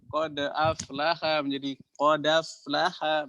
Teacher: Hamzah nya dihilangkan aja ya diambil harokatnya doang